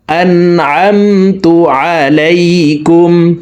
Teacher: আইনের মাখরাজ হলকের মধ্যখান থেকে হবে, তাই আমরা হলকের মধ্যখান থেকে উচ্চারণ করব, হামজার উচ্চারণ করতে যাব না।